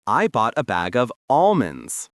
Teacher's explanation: We save the L sound for the word almost, but we drop it for almond.